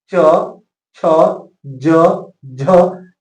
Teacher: जैसे ही आप च छ ज झ बोलेंगे, च छ, तो आपका जीभ जो है तालु में सटेगा और इसका उच्चारण स्थान इस प्रकार से तालु होता है।